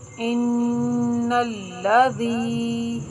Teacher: نون کے اوپر حرکت غیر مدہ ہے، اس کو بالکل نہیں کھینچنا، اس کو بغیر کھینچے پڑھیں گے